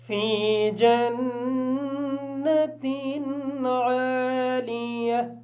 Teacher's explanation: جو گول تا ہوتی ہے حالات وقف کی وجہ سے اس کی آواز ہا جیسی ہوتی ہے.